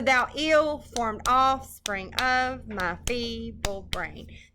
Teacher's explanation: That's iambic pentameter, 2 syllables per pair, 10 syllables per line, unstressed stressed, and then they rhyme in couples, in pairs of 2.